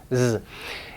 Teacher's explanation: It's exactly the same as the S, but with voicing. That's the only difference between S and Z.